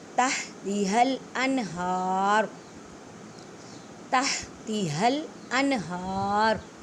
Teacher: نون ساکن کے بعد تا ہے، اخفا کریں، من نہیں کہنا،